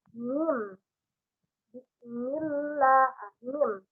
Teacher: ketika mengucapkan huruf mim, jadi yang bertemu itu adalah bibir atas dan bibir bawah.